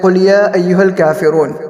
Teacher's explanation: مد منفصل کو ہم 2 الف ڈائی الف کے مقدار کھینچیں گے، اس سے زیادہ نہیں کریں گے اور اس سے کم بھی نہیں کریں گے